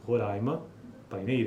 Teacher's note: em Boa Vista os ditongos decrescentes seguidos de consoantes nasais manifestam-se foneticamente como uma sequência de vogal Glide orais